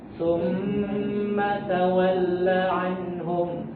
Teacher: huruf mim bertasydid itu harus ditempo Pak ya